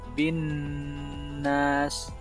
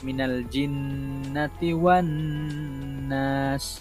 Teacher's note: Nun itu bersabdu dan kita tekankan sedikit suara dan dengung sekadar 2 harakat.